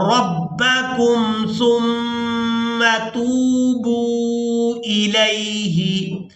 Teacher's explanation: سا کو میم مشدد کے ساتھ ملاتے ہوئے میم مشدد پر غنہ کریں گے